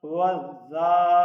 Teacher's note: اب یہ زال جو ہے اس کے اوپر کھڑا زبر ہے تو اس کو ایک الف کی مقدار لمبا کر کے پڑھنا ہے اور اس کے اوپر سیٹی کی آواز سے بچنا ہے